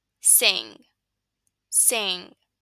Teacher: you probably feel your tongue stuck in the back